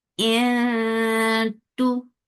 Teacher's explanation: you're keeping the sound in your nose, and you are going towards the makhraj of ta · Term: ikhfa